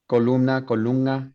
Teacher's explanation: in Central America, if you have 2 nasals together, then the first one is velarized. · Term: velarization